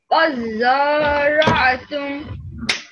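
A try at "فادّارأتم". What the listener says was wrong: Okay, so over here, just remember with the hamza, this is a small hamza, so it's going to have the sound of the alif, not the ain. Okay, faddaratum.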